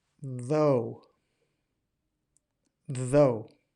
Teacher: You should almost be getting like a vibrating sensation.